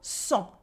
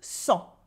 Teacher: cent with the silent T and this en sound that is nasal